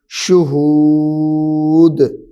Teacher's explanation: دال بھی حروف قلقلہ میں سے ہے تو اس کو بھی ظاہر کریں گے